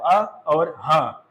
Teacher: تو سب سے پہلے دو حرف حمزہ اور ہا، تو یہ حلق کے ابتدائی حصے سے ادا ہوتے ہیں. اگر ان کو زبر کی آواز کے ساتھ پڑھا جائے تو آ اور ہا، تو یہ حلق کے ابتدائی حصے سے ہو گئے.